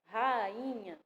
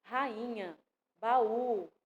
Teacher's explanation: a gente fala o A e o I com a mesma força, com a mesma intensidade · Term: hiato